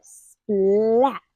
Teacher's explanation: notice how I hold out the L A little bit longer